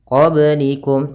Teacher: ini ada bacaan qalqalah, yaitu kita pantulkan ba-nya